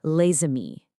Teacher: A consonant at the end of a word that's usually silent, like the S in lay, will actually jump over and link up to the next word if it starts with a vowel. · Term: liaison